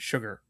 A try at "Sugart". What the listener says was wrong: So you don't go long with the U.